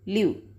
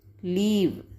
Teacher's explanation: Here, I is short versus leave. That is EE, long EE. We need to make long EE sound here with the vowel E.